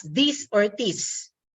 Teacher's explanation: the th sound is often pronounced as D or T for example this may be pronounced as this or this okay